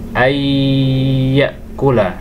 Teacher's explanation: nun sukun masuk kepada huruf ya, kemudian disertai dengan dengung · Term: idgham bi gunnah